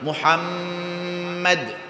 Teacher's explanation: নুন এবং মিমে যদি তাসকির থাকে এখানে একটু ধইরা রাখতে হয় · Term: ওয়াজিব গুন্না